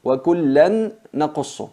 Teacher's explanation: fusionamos el nun sákina en la nun y mantenemos la gunna. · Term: idgham con nasalización